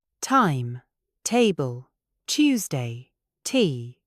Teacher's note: Notice the H sound that follows the T. It is almost like saying th time. There is breath behind it. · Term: true T